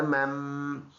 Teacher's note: وَأَمَّا حمزہ میم مشدد ایک الف کے اندازے سے اس پہ غنہ ناک میں آواز لے کے جائیں گے اور یہ میم اور یہ چھوٹا میم ملا کے پڑھیں گے.